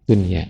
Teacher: Kata dunia juga, dunia ketemu ya, harusnya idgham tapi harus dibacanya jelas. Ya, biasanya idgham tapi di sini ternyata tidak boleh idgham, harus izhar.